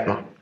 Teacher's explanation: On a la lettre J qui se prononce Y en allemand.